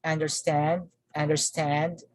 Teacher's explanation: the primary stress is on the second component